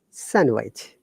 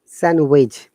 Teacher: no D sound in sandwich